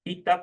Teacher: la zona de articulación pasiva es la zona alveolar, pero que también tiene bastante contacto con la zona dental